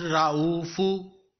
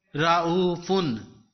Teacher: Ra'u, fe two pesh fun, ra'u fun. There is tanween on fe. You have to pronounce it ending in noon. Ra'u fun. If there is single pesh on fe, it is pronounced ra'ufu.